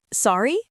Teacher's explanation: Just say it with a rising tone like sorry. It means can you repeat that?